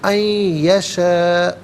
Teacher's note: ان یشاء اللہ، ان میں نون ساکن ہے، اسے یشاء کی یا کے ساتھ ملائیں گے، یا کی آواز کو غننے کے ساتھ ادا کریں گے